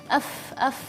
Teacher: Yang kedua sifat rakhawah. Sifat rakhawah ini artinya suara yang tidak ditahan atau tidak tertahan. F.